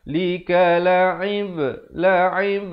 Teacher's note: ada pantulan di sini. Ba huruf qalqalah sughra di sini.